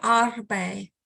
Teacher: the first syllable is stretched, R, and then there's a rolled R, and then bei, arbei.